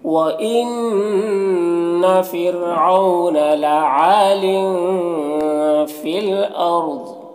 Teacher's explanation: عین میں الف مدہ ہے، ایک الف کے برابر کھینچیں گے، تنوین میں اخفا ہوگا، اور یہاں پر الف لام حروف قمری حمزہ کے شروع میں ہے تو لام کو پڑھیں گے، الف کو نہیں پڑھیں گے۔ یہاں پر را ساکنہ سے پہلے حمزہ کو پر زبر ہے تو را کو پر پڑھیں گے، ضاد کو بھی پر پڑھیں گے، یہ حروف مستعلیہ میں سے ہے اور وقف کی صورت میں زیر سکون سے بدل جائے گا تو اس طرح سے پڑھیں گے۔